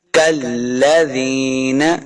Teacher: کاف کو لام کے ساتھ لانا ہے، لام مشدد ہے اور اس کاف کو موٹا نہیں کریں گے